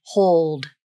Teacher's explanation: Now the dark L in the word hold. Notice the lips are rounded for the vowel, and the tongue is low. Then the back of the tongue simply tenses and pulls back for the dark L, with the tongue tip down. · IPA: /hʊld/